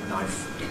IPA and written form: naɪf (knife)